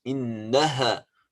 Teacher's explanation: Here we have to clear up al-ha. Al-ha is coming from the throat.